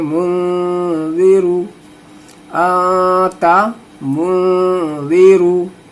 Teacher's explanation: نون ساکن کے بعد حروف اخفا میں سے زال آ رہا ہے تو یہاں پہ ناک میں آواز کو رکھنا ہے